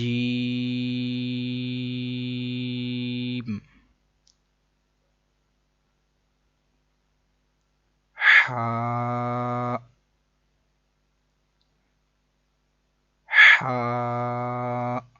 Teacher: یہ ہا حلق کے درمیان والے حصے سے ادا ہوتا ہے